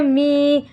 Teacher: یا مدہ کو ایک الف کے برابر ہم کھینچ کر پڑھتے ہیں